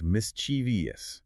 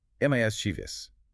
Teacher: It is strictly a three-cllable word with the stress firmly on the first syllable. Mchus, you must train yourself to drop the I sound between the V and the O.